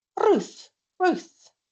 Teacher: in the Scots accent, you will hear the same R as you would hear in Spanish or in Italian